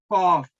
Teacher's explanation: जुबान का पिछला हिस्सा को ऊपर उठाए और जो आपका गले का एयरवेज है उसको ब्लॉक कर ले पहले, तो फिर ये कॉफ थिक वाला अदा होगा